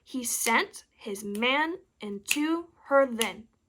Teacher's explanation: the stress appears on the second syllable each time and it appears four times which means this line is an iambic tetrometer an iambic tetrometer